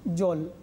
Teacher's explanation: এই যে জল আমরা পেলাম, এখানে কিন্তু আমরা জল উচ্চারণ করছি না, তাহলে লটা হসন্ত বা হলন্ত উচ্চারিত হচ্ছে। এবং এই জলটা দেখো দুটো ব্যঞ্জনের দ্বিত্ব অর্থাৎ যুগ্ম উচ্চারণ হচ্ছে, এই কারণে একে আমরা বলছি রুদ্ধ দল।